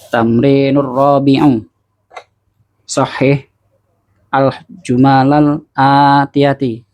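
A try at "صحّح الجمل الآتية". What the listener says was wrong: Sukun ketemu sukun. Sukun ketemu sukun gimana kaidahnya? Sukun yang pertama di kasrah. Berarti apa? Sahihil. Ya, diharokatin. Sahihil jumalal atiyah. Kenapa ti tadi? Kenapa ti? Nggak bisa mau alif lam. Kan anak pernah sampaikan alif lam. Marifat. Kalau marifat itu hanya ada dua kemungkinan. Hanya ada dua kemungkinan susunan.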